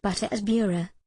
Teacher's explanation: a single quick flip of the tongue against the upper part of the mouth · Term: flap